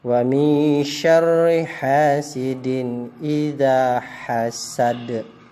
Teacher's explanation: huruf dal di akhir, itu namanya qala kubra atau memantul